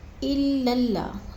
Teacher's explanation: لام کو لام مشدد کے ساتھ ملا کر پڑھنا ہے، سختی سے جماؤ کے ساتھ ادغام کرنا ہے